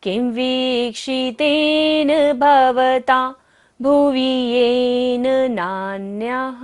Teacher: विसर्ग है नान्यः पर, तो सारी सांस को हमें बाहर छोड़ना है, विसर्जन करना होगा।